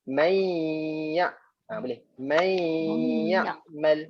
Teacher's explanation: Jadi kita masukkan je daripada may ya'mal, tambah sikit suara hidung kat sini. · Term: gunnah